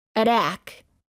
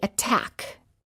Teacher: the T does not change to a fast D sound if the t is within a stressed syllable